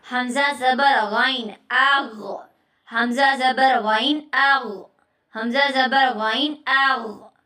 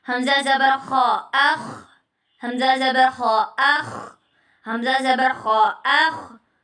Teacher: ادنا حلق منہ کی طرف والا حصہ، یعنی حلق کا ابتدائی حصہ جہاں سے شروع ہوتا ہے حلق، شروع والا حصہ.